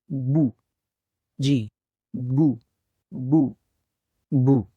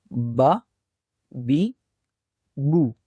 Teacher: दोनों होठों को आपस में मिलाने से हर्फ ब की आवाज अदा होती है